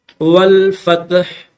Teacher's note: آخر میں ہا کو ظاہر کریں گے۔